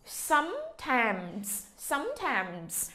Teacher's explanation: cái chữ sometimes này thì nó có S thì chúng ta xì Z cho giùm cô nha. · Sometimes thì chúng ta nhấn cái chữ thứ nhất. Cái âm tiết thứ nhất thì sờ ớ sớm mà sầm, sắc sấm.